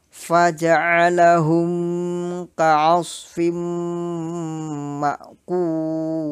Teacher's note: Penjelasannya adalah, pertama, perhatikan bunyi makhraj huruf sod, ha, ain, dan fa, yaitu menjadi so, ha, a, dan fa. Kedua, lafal ka'asfim ma'kul, fimnya dibaca dengan menekan dan berdengung